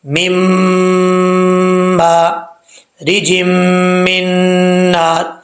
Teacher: اچھا جی، اب یہاں پر نون ساکن کے بعد میم آ رہا ہے جو کہ حروف یرملون میں سے ہے، تو یہاں ادغام یرملون ہوگا، یعنی پہلی میم کو دوسری میم کے ساتھ ملائیں گے، اور ایک الف کی مقدار غنہ بھی ہوگا۔